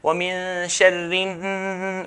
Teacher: We want that nasalization sound. We're going to hold it a bit longer.